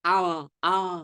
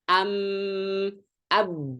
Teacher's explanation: kedua bibir itu dirapatkan ketika mengucapkan hurufnya sebagaimana kalau kita ngucapin mau mim kek mau Ba kek dua-duanya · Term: merapatkan dua bibir